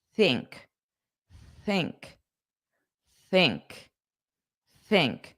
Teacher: But it's not a silent sound. The th is still a sound. It's just not voiced. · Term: unvoiced th